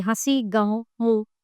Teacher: इसका उच्चारण करते समय हवा नाक और मुख दोनों से निकलती है। इसको चंद्रबिंदु ही कहते हैं, जैसे हंसी, गाँव, मुंह आदि। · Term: अनुनासिक